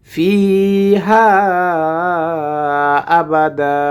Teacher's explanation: আবাদা যদি ওয়াকফ করি তাহলে 2 জবর থাকলে এখানে 1 জবর উচ্চারণ হবে এবং বামে আলিফ আসার কারণে 1 আলিফ টেনে পড়তে হবে